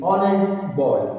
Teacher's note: The reason is the H in honest is silent. We do not pronounce the H at the beginning of honest.